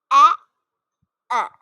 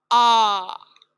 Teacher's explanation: This sound is a diphthong, but nowadays it's usually pronounced as a monophthong. Monophthong is a single vowel sound.